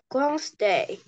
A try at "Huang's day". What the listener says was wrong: Hua. Huang's day. Ah, this one is letter H. Hua. Huang's day.